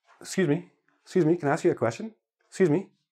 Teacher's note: sometimes we even drop the initial vowel